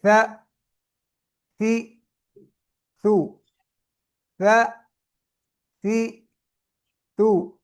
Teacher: سا نرم اور باریک بغیر سیٹی کے، سا، سی، سو، سا، سی، تو، سیٹی نہیں نکالنی اس میں۔